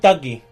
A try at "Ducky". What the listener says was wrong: It's Ducky. You sound like you're saying Dougie. Which is a dance.